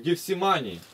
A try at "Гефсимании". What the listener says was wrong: Гефсимании. Ударение на А.